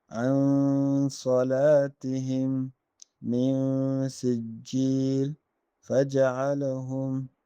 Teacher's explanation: So this, if any of the following letters appears after Nun Sakinah or Tanween, Ikhfa, that is a nasal sound equal to one alif, should be made